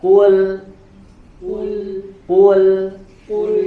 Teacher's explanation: nah huruf lamnya dibaca dengan tipis